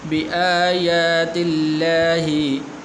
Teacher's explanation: لفظ اللہ سے پہلے زیر ہے تو اس لیے موٹا نہیں کرنا، پر کر کے ہی پڑھنا، باریک پڑھنا ہے